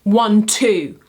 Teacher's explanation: An iambic rhythm is a rising duple rhythm, which means it starts on an unstressed syllable and ends on a stressed syllable.